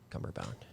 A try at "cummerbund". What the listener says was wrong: Cumberbund. You said it wrong. Cummerbund. Bun, not a bound.